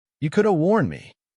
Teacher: The 'h' sound often vanishes, and the 've' at the end of 'have' reduces to a weak 'a' sound. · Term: coulda